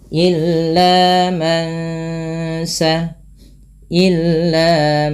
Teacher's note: ketika bertemu Sin nunnya disamarkan kepada bunyi Sin terdengar bunyi Eng maka ini kita namakan dengan bacaan tajwidnya ikhfa Hakiki ikhfa Hakiki